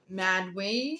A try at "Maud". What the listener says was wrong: The E is silent. It's Maud.